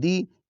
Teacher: دال کے نیچے جو زیر ہے اس کو بھی مجہول نہیں پڑھنا ، بہت سارے لوگ اس کو مجہول پڑھ رہتے ہیں، دے